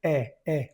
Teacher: Si tiene una e con un acento al revés al otro lado, la pronuncias e e con la boca abierta.